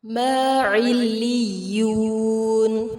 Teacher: عین کو وسط الحلق سے ادا کریں گے، لام اور یا مشدد کو شدت کے ساتھ ادا کیا جائے گا.